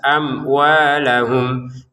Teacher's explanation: mim sukun bertemu wawu kita baca dengan jelas, amwalahum.